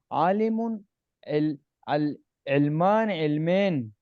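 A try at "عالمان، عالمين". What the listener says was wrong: دیکھ کیوں آپ اس کو علمین کر رہے ہو؟ عالم کو کیوں چھیڑ رہے ہو؟ عالم کو نہیں چھیڑنا آپ۔ عالمان، عالمین، یعنی کہ پہلا جو لفظ ہے نا، لفظ کو لفظ کو نہیں چھیڑنا۔ شاباش، یہ آگے بھی کریں، آگے بھی کریں پھر صاحب۔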